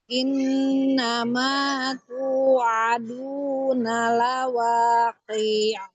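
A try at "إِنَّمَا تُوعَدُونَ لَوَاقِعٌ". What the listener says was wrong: Ya, huruf ain jangan ambil ancang-ancang, langsung adu, adu. adu, jangan. Innama tu'aduna, aduna.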